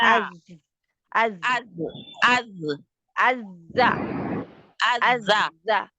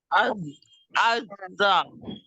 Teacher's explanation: رکے گی، چھوڑا نہیں جائے گا اس کو، ٹھیک ہے، اور پیچھے سے زبان کی جڑ بھی نیچے رہے گی، کیونکہ یہ استعلا لیٹر نہیں ہے ، نہ یہ اتباق ہے، یہ پھر کدھر چلا گیا، استفال